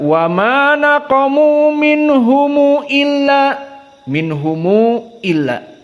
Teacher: Ibnu Katsir dan Abu Ja'far majaiz munfasil dalam keadaan dua harokat saja. Adapun illa an juga dibaca dalam keadaan qasr.